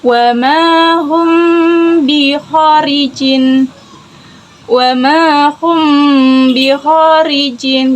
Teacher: Ada 3 hukum bacaan mim mati, yaitu ikhfa syafawi, yakni dibaca samar dan didengungkan, terjadi ketika mim mati bertemu dengan huruf ba.